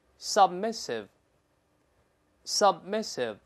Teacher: sub，闭上嘴，但没有▁b，没有喷出来，失去爆破了